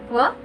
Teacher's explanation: It is a voice velar approximant